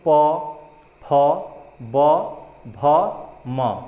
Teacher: प फ ब भ म, क्या हो रहा है, दोनों जो लिप्स हैं बोलते वक्त ये अपने आप मैच कर रहे हैं, यानी कि टच कर रहे हैं, दोनों लिप्स मिल जा रहे हैं। तो इसीलिए प फ ब भ म बोलने के लिए आपको दोनों ओष्ठ जो है मिल जाते हैं, इसीलिए इसको ओष्ठ व्यंजन।